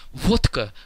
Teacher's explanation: Look, here we have this word vodka. It's written with a D and a K in the middle, but when it's pronounced correctly, it's pronounced vodka with a very clear T. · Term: vodka effect